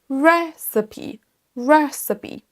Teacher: Vous avez peut-être entendu que ce mot est accentué sur la première syllabe.